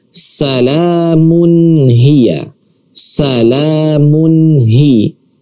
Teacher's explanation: huruf-huruf yang berasal atau yang keluar dari tenggorokan jadi kita baca Salamun Hiya Salamun Hi tidak kita dengungkan atau kita samarkan · ha ini adalah huruf halqi. Ya, huruf-huruf yang berasal atau yang keluar dari tenggorokan. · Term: izhar